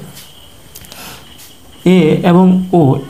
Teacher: যেমন এ এবং ও এই দুটি মৌলিক স্বরধ্বনি উচ্চারণ করার সময় আমাদের জিহ্বা সর্বোচ্চ অবস্থানে না থেকে কিছুটা নিচে অবস্থান করে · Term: অর্ধ সংবৃত্ত স্বরধ্বনি